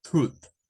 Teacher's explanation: el sonido TH sin vibración se parece más a una especie de T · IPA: θ